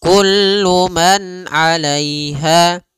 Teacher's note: Pada lafal kullu man di sini ada izhar halqi, yaitu suara nunnya dibaca dengan jelas ketika bertemu dengan huruf ain